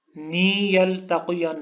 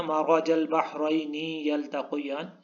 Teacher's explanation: آپ نے نون کے نیچے جو زیر ہے اس کو زیر ہی پڑھنا ہے، کھڑی زیر نہیں پڑھنا